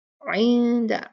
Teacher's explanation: یہاں ہم نون ساکن کا اخفا کریں گے، چھپائیں گے اس کو ، اندہ اندہ نہیں پڑھیں گے، اندہ نہیں، عندہ عندہ، عین